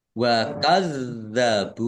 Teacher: Dalnya dibaca dobel ada tasdidnya ditekan biar tampak dobelnya